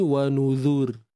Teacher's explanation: kalau nipis ni wanuzur kan kita kena pastikan pangkal lidah kita tu merendah